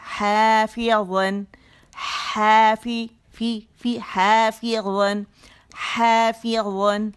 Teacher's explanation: ज़बान की टिप कहाँ जाएगी, सामने के दो दांतों के किनारों को लगेगी, और जड़ पर उठ जाएगी और प्याला बन जाएगा